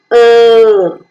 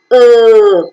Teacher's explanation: earn very good during the articulation of the second Central sound the central part of the tongue is raised to your position which is between half close and half open the lips are neutral and so the sound is unrounded if